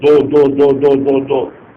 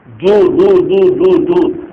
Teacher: دال کی پیش اس کو معروف پڑھنا ضروری ہے